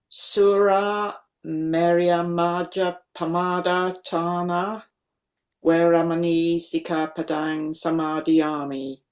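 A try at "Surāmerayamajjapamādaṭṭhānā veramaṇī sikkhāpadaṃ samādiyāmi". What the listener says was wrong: Okay, I detected a slight pause, a slight lengthening of that syllable. Not lengthening of the vowel, because it's distinctly a short vowel, but lengthening as for a following double. On your doublings, there, Suramerya Majja Pamadatthana Sikkapadam. Those are unambiguously double verb.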